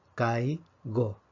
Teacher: en el primer caso tenemos un diptongo kay go porque tenemos la vocal abierta vocal cerrada eso es un diptongo por lo tanto forma una sílaba